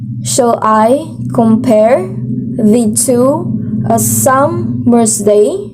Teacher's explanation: So, the stressing pattern is all iambs. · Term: iambic pentameter